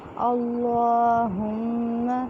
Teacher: اللہم ہا جو ہے یکسر حلق سے نکالیں گے سینے والی سائڈ سے. اللہم میم مشدد ہے اس پہ غنہ کریں گے